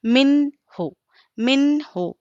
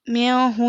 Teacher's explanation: تو دیکھیں یہ قاعدہ نمبر 1 اظہار کا ہے، جس میں نون ساکن یا تنوین کے بعد حروف حلقی کے 6 حرفوں میں سے کوئی حرف آئے تو وہاں پر کیا ہوگا اظہار ہوگا. نون کو ظاہر کر کے بلا غنہ کے پڑھیں گے